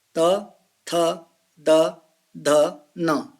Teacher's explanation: त वर्ग त थ द थ न इसका उच्चारण स्थान दंत है। दंत इनका आप दांतों के बिना उच्चारण नहीं कर सकते हैं। त थ द ध न कहने का मतलब है हमारी जीवा दांतों को स्पर्श करती है। · हमारी जीवा दांतों को स्पर्श करती है, तो दंत हो गया।